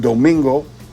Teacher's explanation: a three-syllable word you stress the second syllable because it's also the second to last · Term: second to last syllable